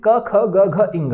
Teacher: का वर्ग का स्थान कौन सा है उच्चारण स्थान कंठ है कंठ से ध्वनि आपकी जा रही है